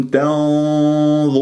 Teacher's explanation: النون مع الضاء إخفاء لكن بغنة مفخمة